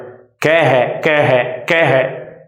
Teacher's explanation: तो खे जो बनता है वो कै और है से मिलकर बनेगा। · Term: महाप्राण